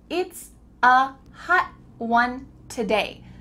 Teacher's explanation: Your tongue is at the top of your mouth, you're going to say “hot”, but instead of letting the air through your tongue just sticks there.